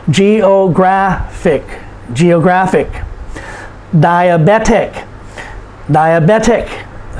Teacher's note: the next to the last syllable is graph geographic and so because it ends in ic we put the emphasis on the second to the last syllable